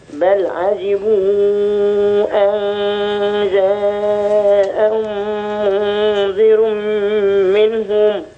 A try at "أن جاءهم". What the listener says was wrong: اختلسنا غنة، في غنة نعم.